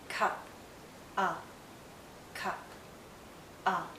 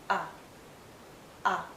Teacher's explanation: it's a very short sound and also a very relaxed sound